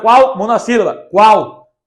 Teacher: vem primeiro a semivogal e depois a vogal. Percebam, vem primeiro o u, depois o a. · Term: ditongo crescente